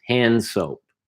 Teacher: Hand soap. Yeah, the D's there, but you're not really pronouncing it.